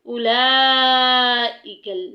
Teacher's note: یہاں پہ اولا نہیں کرنا، یہ لفظ ہے اولئک، یہ بڑی مد آ گئی ہے، اس کو 2.5 الف کے برابر تقریباً لمبا کرنا ہے